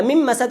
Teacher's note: بعد از نون ساکن میم اومده اینجا ادغام میشه